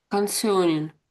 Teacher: So you sound like you're overdoing the R in the middle. And they've got like a real baby small R there, which normally means it's fairly quiet, it's not really there, it's half there, that sort of a thing.